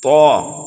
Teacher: یہ حروف مستعلیہ میں سے ہے، اس کو ہم موٹا کر کے پڑھیں گے